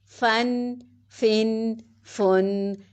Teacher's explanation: فا پہ ثنایا علیہ کے سرے نیچے والے ہونٹ کے شکم میں پیٹ میں لگیں گے